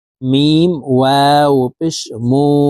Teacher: এক আলিফ টেনে ঠোঁট গোল করে পড়তে হবে